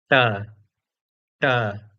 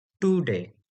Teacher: The Sanskrit ta is the retroflex ta. So, the underside of our tongue is touching the hard palate. So, there's a difference.